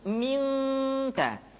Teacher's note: Ketemu kaf maka dominan kepada huruf eng